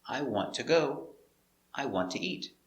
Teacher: when you use two to connect two verbs the two is not stressed so it's pronounced ta